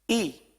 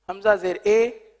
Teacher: تو اے نہیں پڑھنا بلکہ ای پڑھنا ہے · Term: معروف طریقہ